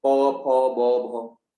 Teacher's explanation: प प फ ब भ बोलने में दोनों होंठ टकरा रहे हैं आपस में, जीभ तो लगी नहीं रही। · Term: ओस्ट